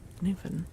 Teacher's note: you're supposed to really pronounce the word land at the end. So you slur the first bit, Newfoundland.